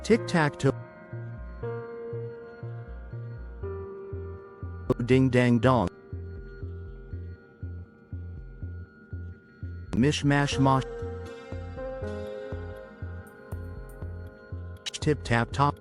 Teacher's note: Each of these follows the sacred order of vowels from front to back, high to low, tight to open.